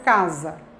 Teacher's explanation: Observem que ele é diferente do primeiro A, casa, não é? Ele é um A que é reduzido e que aparece em posição átona.